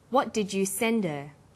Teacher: send her send is the strong form and her is weak because her is not stressed we drop the initial H sound